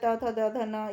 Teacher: दांत से जिनका होता है त, थ, द, ध, न, ये दंत्य होते हैं